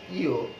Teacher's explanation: যখন এটা উচ্চারণ হবে তখন ফুসফুসতাড়িত বাতাস কি হবে, সেটা মুখের পাশাপাশি নাকের সাহায্য নিয়ে বের হবে। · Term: সানুনাসিক